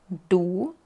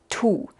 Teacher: Ponemos la lengua en la misma posición como la D, tal vez un poquito más por atrás, pero hay más presión antes de soltarlo y puedes sentir otra vez este fuerte movimiento de aire.